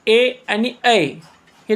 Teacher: कंठातून आणि ताळूला स्पर्श करून आवाज निघतो त्यामुळे ए आणि हे कंठतालव्य असणारे वर्ण आहेत